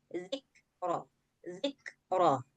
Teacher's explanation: Bunyi hams itu ada suara angin karena kaf dia punya sifat hams.